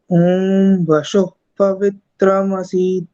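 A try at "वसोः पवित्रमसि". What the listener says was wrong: ये जो वसोह बोला आपने, उसका वशोह ऐसा सुनाई दिया मुझे, श जैसा, तो स में शुद्धता कम लग रही थी, उसको सुधार करेंगे।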